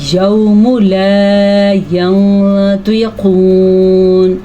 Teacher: قاف بھی موٹا ہے اور اس کے ساتھ ساتھ طوا بھی موٹا ہے · نون کی آواز کو چھپائیں گے اور اس کے ساتھ ساتھ غنہ بھی کریں گے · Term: اخفا